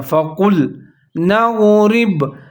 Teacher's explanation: لام کا خیال رکھنا ہے، اس کو باریک پڑھنا ہے